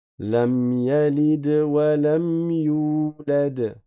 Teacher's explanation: Et quand le D a un scoun, comme on a vu dans les lectures précédentes, dans les versets précédents, on fait une kalqala.